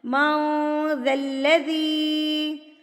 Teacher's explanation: تو نون ساکن کی آواز کو آپ نے ناک میں چھپا لینا ہے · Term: اقفا